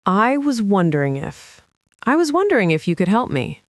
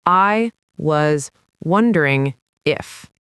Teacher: See how was and wondering just kind of melt together.